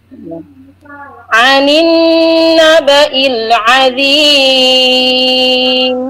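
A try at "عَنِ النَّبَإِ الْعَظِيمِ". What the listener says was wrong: Nah, dha-nya masih kurang tebal. Huruf dha, dhi, azim, tidak azim tapi azim. Terasa tebalnya.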